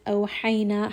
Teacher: Ha is going to be from the middle of the throat.